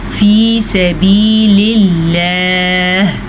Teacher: یہاں پہ تو ہمارے پاس پیچھے زیر ہے تو ہم اس کو باریک پڑھیں گے۔